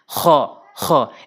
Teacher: খ এভাবে উচ্চারণ করবেন হলকের শেষ থেকে।